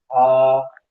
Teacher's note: ये सीरे के पास जो हलक है वहां से अदा होगी।